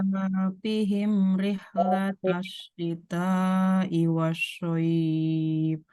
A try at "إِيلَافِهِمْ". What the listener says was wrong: Lagi i-nya panjang. I-nya panjang. Ilafihim.